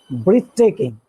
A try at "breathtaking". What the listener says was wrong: The first syllable. What's this? Breath. Not breathe, breath.